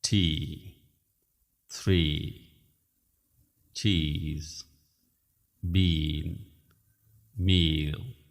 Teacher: lips into a smile push your tongue forward in your mouth e is a long sound move your tongue up a little as you say it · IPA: /iː/